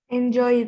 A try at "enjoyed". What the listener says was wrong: Enjoyed. No. No me hagan esa pronunciación larga, por favor. Porque esa es para esta clasificación. Y esto no entra acá, es enjoyed. Remember, depending on the consonant, the way you're going to pronounce.